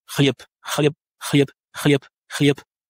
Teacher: Et aussi, on assiste au même phénomène d'assourdissement de lettres en fin de mot. Donc, le B va s'assourdir pour devenir P.